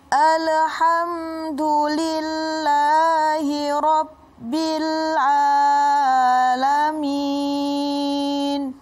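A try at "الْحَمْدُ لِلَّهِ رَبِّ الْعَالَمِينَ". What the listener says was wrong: Nah, ini ada huruf lam. Lam ini bukan huruf qalqalah. Nah, kalau huruf qalqalah kan ada jumlahnya kutubu jadin. Nah, ini bukan huruf qalqalah. Jadi alham.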